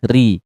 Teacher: huruf ro RI dibaca tipis karena huruf huruf berbaris kasrah dibaca tipis